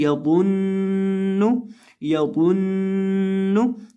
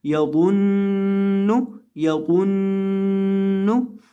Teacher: इसकी आवाज़ को नाक में गुनगुना कर हमने पढ़ना है, एक अलिफ के बराबर गुन्ना करना है, बहुत ज़्यादा लंबा भी नहीं करना, यानी गुन्ने की मिकदार 1 सेकंड के बराबर होगी।